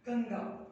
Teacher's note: जो अनुस्वार का उच्चारण आ रहा है ना, वो उच्चारण कहाँ से आ रहा है? नाक से हो रहा है, गंगा, ठीक है।